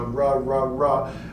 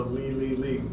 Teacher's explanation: Right, so if we think about what we're saying about these, like the rose is going to have a lot more rounding. The ra, ra, ra, it's going to have a lot more rounding than will the li, li, li. It's going to be a much more back mouth posture for those two.